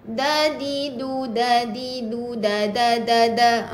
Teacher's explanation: Kita nak di akar gigi. Tempat permulaan gigi nak tumbuh. Gigi kapak tu. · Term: bunyi dal